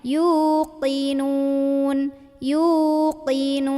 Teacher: Di sini lagi-lagi hati-hati dengan huruf qaf, jangan tertukar dengan kaf. Bukan yuqinun tapi yuqinun, pangkal lidah naik